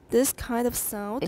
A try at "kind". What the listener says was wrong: 好像少了个N. 时间要点上去,然后有鼻音. Yeah, in my data, I found lots and lots of this. kind or sound, pronounced sound, kind. 或者完全少了鼻音，或者母音有一点鼻音，可是 m 没有了 kind, kind. It's hard for me to reproduce, but it sounds really odd to my ears. This kind of sound, 都有那个 n 加 d, 注意鼻音。This kind of sound, 那个 n, 稍微强调一点。This kind of sound, everyone?